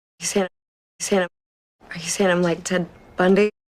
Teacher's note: she's laughing a little bit, so there's a little bit of breathiness in her voice.